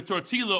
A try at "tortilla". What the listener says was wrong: You had a capital L at the end of that.